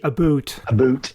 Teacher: this known as Canadian raising, this feature of how the word about is pronounced